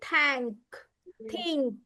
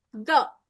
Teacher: Okay, it is voiceless when we say th. But when we say the hard the, we can hear the voice hard the. So this is here in this word, this TH makes the hard the sound.